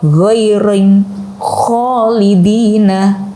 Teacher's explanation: ujung tenggorokan adalah ghain dan juga kho